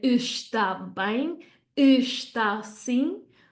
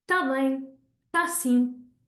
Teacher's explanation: In real life, we wouldn't hear está bem, está sim. We would hear tá bem, tá sim.